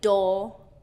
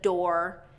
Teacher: The American R. And what I'm hearing instead of the American R, which is kind of smooth and strong, is I'm hearing either a rolled R or a relaxed R